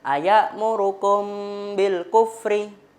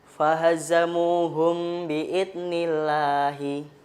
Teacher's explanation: karena mem mati bertemu ba, makanya ada sedikit unsur dengung. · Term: ikhfa syafawi